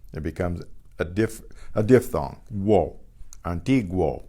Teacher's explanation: the U is pronounced because it's in combination with a strong vowel. It becomes a diphthong.